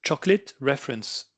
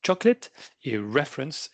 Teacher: Chocolate reference, vous voyez la syllabe forte, elle est au début. Chocolate et reference, elle est au début aussi.